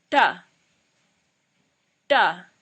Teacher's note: Alright, the next category is the cerebral letters, and this is a special kind of sound because this is absolutely not there in the English way of speaking. And the way to pronounce these letters is by curling your tongue backwards. So the tip of the tongue is touching the roof, but it's the back side of the tip of the tongue. So you kind of flick the tongue over as you pronounce the letter.